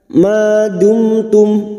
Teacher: mim sukun masing-masing kita baca jelas tanpa mendengung. Mim sukun bertemu ta, mim sukun bertemu ha, idhar safawi.